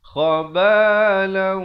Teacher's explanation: Khabalau, di sini didengungkan, tanwin bertemu waw, idgham bi gunnah, dengung 2 harakat